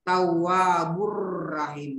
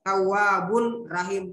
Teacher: Karena ada dammatain bertemu dengan huruf ra, dan cara membaca itu tidak berdengun. Cara baca bagaimana itu seolah-olah mau disebut ini huruf ra. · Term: idgham bila gunna